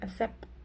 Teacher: for standard Jamaican English or Jamaican patois, they all tend to kind of drop the consonants, as in the word accept.